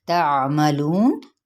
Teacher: ता की ज़बर को बारीक पढ़ते हुए आइन को भी वस्ते हलक से अदा करना है जज़म के साथ। लू पे मद्दे असली बिल वाव का कायदा, और नून पे जब हम वक्फ करेंगे तो वक्फ बिल इस्कान।